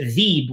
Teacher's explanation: he reads it veeb without a hemza